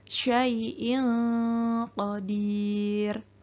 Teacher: maka bacaan nun sukun atau tanwin harus dibaca samar dan didengungkan 2 harokat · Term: ikhfa